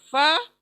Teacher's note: सामने के दो दांत टच होते हैं होठों के गीले हिस्से से, फ अदा होता है